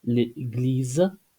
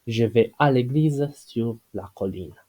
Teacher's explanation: because we have the two vowels one after another from different words, then we use the process of elision and we obtain l.